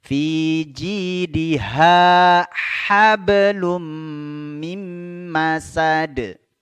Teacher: ada ha yang di tenggorokan bagian bawah di depannya ada ha yang di tengah tenggorokan